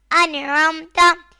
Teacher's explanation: حمزہ نون زبر ان، عین میم زبر عم، انعم، تا زبر تا، انعمتا۔ یہاں نون ساکن کے بعد حروف حلقی میں سے عین آ رہا ہے تو اظہار ہوگا، یعنی گنہ نہیں کریں گے